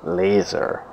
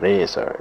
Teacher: if you say it with very much L, laser, or if you say it with more of an R sound, laser